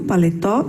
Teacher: a sílaba mais forte da palavra está na última posição